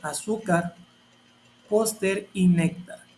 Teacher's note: También aquí terminan con consonante R, entonces tiene el acento en la penúltima sílaba o penúltima vocal